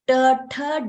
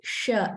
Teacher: when you say t the tongue touches the roof of the mouth when you say sh it doesn't but the same movement and the same um curling up of the tongue is happening.